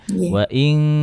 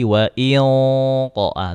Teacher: kalau ee nun sukun bertemu huruf kaf sama qof itu lebih dalam dengungnya kan. Waing atau kalau huruf qof lebih lebih tebal lagi. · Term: dengung ikhfa